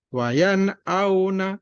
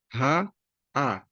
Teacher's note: Jadi ketika ketemu ha, a ini sama-sama huruf halqiyah, kerongkongan bagian bawah